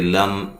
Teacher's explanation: لم میم ساکن کا اظہار ہے، غنہ نہیں کریں گے